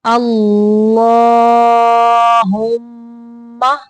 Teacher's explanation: اعوذ باللہ من الشیطان الرجیم، بسم اللہ الرحمن الرحیم، اللہم، اللہ کا لام موٹا پڑھنا ہے، ہا کو ہا نہیں پڑھنا، ہا اقصی حلق سے یعنی حلق کا وہ حصہ جو سینے کی طرف ہے وہاں سے ہا کو نکالنا ہے اور میم مشدد کا غنہ کرنا ہے۔